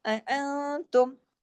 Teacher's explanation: نون ساکن کے بعد تا ہے، اخفا حقیقی غنہ کاملہ